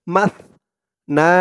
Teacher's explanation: সার উচ্চারণটা একদম নরম হবে পাতলা হবে